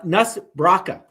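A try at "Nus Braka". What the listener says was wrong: Actually, I think it's Noose, not Nuss. I think it's Noose Braca. Like Hangman's Noose.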